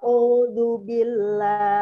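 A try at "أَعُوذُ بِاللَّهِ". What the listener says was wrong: Ya, pas O-nya terasa beda. Ya, terdengarnya beda ya. Berarti harus latihan di vokal ain. Ainnya harus dari tenggorokan, bukan dari hidung.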